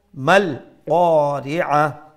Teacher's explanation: The ta will do a waqf bil iskan and the ta will turn into a ha.